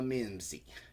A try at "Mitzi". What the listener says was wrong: Mitzi. No, you said Minzy.